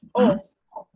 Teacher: es como una O, pero con la boca abierta, pues. Que sin hacerlo, por ejemplo, cuando uno hace una O normal, la boca hace como esto, pero en esa en particular es así, abierta. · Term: O abierta